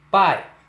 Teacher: O encontro da vogal A com a semivogal I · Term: ditongo decrescente